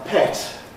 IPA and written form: pet (pet)